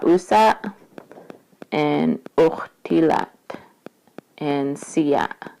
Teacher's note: basically your epiglottis is closing and then it opens up and then it's like a burst of like a puff of air that comes out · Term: glottal stop